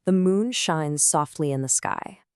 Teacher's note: We identify that da-dum pattern. It's an unstressed syllable followed by a stressed one, which we know is the iamb.